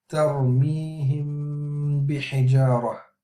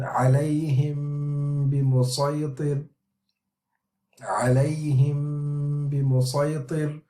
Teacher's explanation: So the ghunna for this ikhfa will be strong, as all of the sound will be coming from the nose. Of course, when we pronounce the meme, we close the lips, so no sound can come from the mouth. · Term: Ikhfaa meme sakin